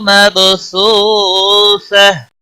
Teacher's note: مب با ساکن پر کلکلا ہوگا